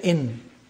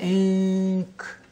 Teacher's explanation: pronouncing the noon not from the point of articulation of noon which is behind the upper teeth but from the point of articulation of the next letter